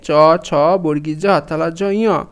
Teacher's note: চ বর্গের সব বর্ণগুলো তালু থেকে উচ্চারণ হয়